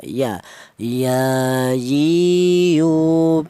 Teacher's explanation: ya juga berasal dari tengah lidah